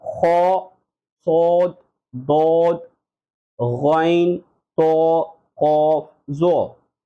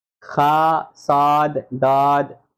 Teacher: they are pronounced as bold with full mouth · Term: Heavy or bold letters